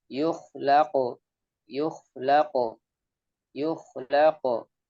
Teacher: Dilepas begitu saja. Pantulannya dilepas begitu saja tanpa ada hentakan suara yang tertahan.